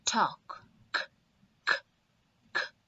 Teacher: On the contrary, if a verb ends with ed and the sound produced is unvoiced, that means there's no vibration felt. It's like coming out of air. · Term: unvoiced sound